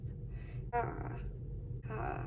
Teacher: The open mid back unrounded vowel. That's in the back of your mouth.